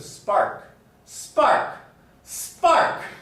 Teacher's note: in the case of spark spark spark even loudly pronouncing it doesn't create this aspiration